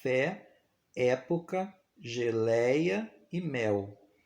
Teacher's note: O fonema E, representado na escrita pela letra E, ele vai ter o som aberto